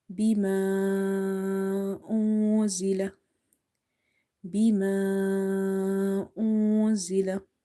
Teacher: We will say hamza dhamma. And here we will apply the rule of madde munfasil. An amount of stretching is 2.5 alif.